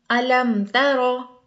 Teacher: بالکل غنہ نہیں ہوگا، بالکل رکنا نہیں ہے، نہ بالکل ناک میں آواز جائے گی، جس طرح الم ترو، بالکل یہاں پر نہیں رکیں گے، نہ میم کو زیادہ ادا کریں گے، نہ ناک میں آواز لے کر جائیں گے، کیونکہ یہاں نہ میم آیا ہے نہ با آیا ہے۔ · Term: اظہار